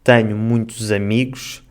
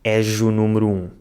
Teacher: Sometimes he uses the /z/ sound and other times the /ʒ/ sound.